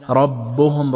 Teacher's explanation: ربهم را مفخم پرادا ميشه فتحه داره